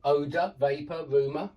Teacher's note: That's the unstressed schwa sound.